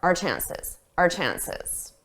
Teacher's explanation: We just do a very soft, unstressed R